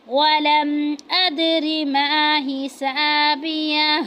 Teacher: अदरी क्योंकि दाल साकिन है तो वहाँ पे ये हरूफ कलकला में से है तो यहाँ पे हम कलकला करेंगे